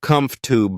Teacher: the middle syllable is reduced to make the word easier to say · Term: syllable reductions